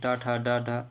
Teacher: ये मूर्धन्य ध्वनियाँ हैं